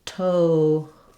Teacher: in total, we have no R sound in this word. We still have the flap T and L combination, but instead of an we have an O diphthong.